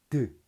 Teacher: 네, 그러면서 드를 발음하게 되는 겁니다. 드 터트리면서 윗 잇몸을 혀 끝으로 막아놨다가 드 터트리면서 발음하죠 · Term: 잇몸 소리